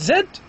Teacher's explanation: An example is the sound Z, because once I pronounce it, the vocal folds are close to one another. They are not apart from one another. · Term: voiced sounds